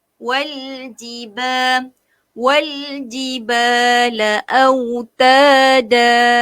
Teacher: kita bunyi lam tu bagi jelas. Jangan lantunkan lam tu balik.